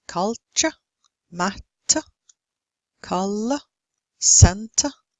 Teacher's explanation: The stress is on the first syllable in these words, and the second syllable is unstressed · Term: schwa